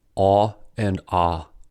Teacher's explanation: Aw and ah are back vowels, where the tongue is low. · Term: Back low vowels